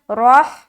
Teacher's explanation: را کو موٹا رکھنا ہے کیونکہ زبر ہے, ہا سے ملا دیا روح.